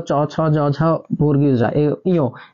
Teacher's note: চ ছ জ ঝ বর্গীয় জ ইয়, এগুলা কিন্তু আমাদের তালু থেকে আসে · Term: তালব্য